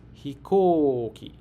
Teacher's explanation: The O sound is stretched. Say it with beats.